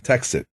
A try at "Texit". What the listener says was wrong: It's not like texting at all. It's like exit. It's exit with a T.